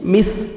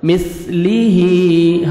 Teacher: سامنے اوپر والے 2 دان نیچے زبان کو ٹچ کرنا ہے تاکہ نرمی سے سا ادا ہو